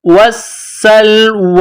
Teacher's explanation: وا والسلوى واو کو پڑھتے وقت ہونٹوں کو گول کرنا ہے واو کے اوپر یہ کڑا زبر ہے ایک الف کی لمٹ میں کھینچنا ہے